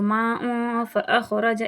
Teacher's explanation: یہاں پر اخفا ہو رہا ہے، تو اس میں ناک میں آواز کو تھوڑا لے کر جائیں گے